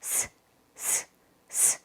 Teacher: 이 사이로 바람이 나가면서 소리가 나죠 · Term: 시옷